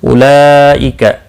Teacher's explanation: مد متصل 4 الف کے برابر کھینچ کر پڑھیں گے۔ لئی یا لین ہے، تھوڑا نرمی کے ساتھ کھینچ کر ادا کریں گے۔